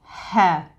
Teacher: So the ha sound comes from the middle of the throat. I've got a scarf on, so, you know, middle of the throat is exactly here.